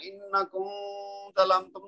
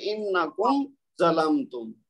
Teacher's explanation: اب یہ میم کو ظاہر ہم نے کرنا ہے, اس کو چھپانا نہیں ہے. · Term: اظہار